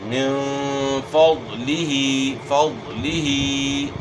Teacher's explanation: ہے تو یہاں اخفا کے ساتھ اپ نے غنہ کرنا ہے ضاد موٹے حروف میں سے ضاد کو اپ نے موٹا ادا کرنا ہے